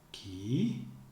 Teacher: Ki, going down, then raising high. That's the intonation of the subject.